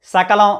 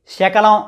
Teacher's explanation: ఒత్తిడి స పలికినప్పుడు ఉండదు స పలికినప్పుడు నాలుక కొన భాగం శా పలికినప్పుడు నాలుక మధ్య భాగం ఉపయోగించాలి